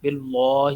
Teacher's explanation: لفظ اللہ کے لام کو باریک پڑھنا ہے